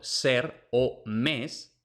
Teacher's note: es una s apico alveolar es decir no es la s típica andaluza no es la s típica de hispanoamérica sino la s del centro y del norte de la Península